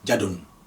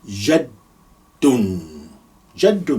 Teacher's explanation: Without the shadda, you say jadun. But because of the shadda, we say jad. You pause and then you say it.